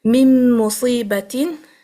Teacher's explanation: noon is fully dropped into the mim, so a complete merging